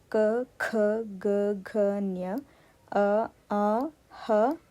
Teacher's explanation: ಕಂಠದಲ್ಲಿ ಹುಟ್ಟುವುದರಿಂದ ಆ ಅಕ್ಷರಗಳಿಗೆ ಕಂಠಾಯಾಕ್ಷರಗಳು ಎಂದು ಹೆಸರು